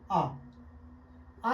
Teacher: जब मैं आ बोल रहा हूं तो पूरा मुंह खुलता है। इसकी दूसरी परिभाषा कह सकते हैं कि वे स्वर जिनके उच्चारण मुंह पूरा खुलता है, वे स्वर जिनके उच्चारण में मुंह पूरा खुलता है, उसे कहते हैं हम विवृत स्वर।